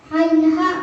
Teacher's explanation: Ain, ha, makhrajnya tengah tenggorokan.